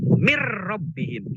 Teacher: Tapi ketika min rabbihim bukan min rabbihim, mir rabbihim. Itu nunnya jadi masuk ke ro. Itu namanya idgham.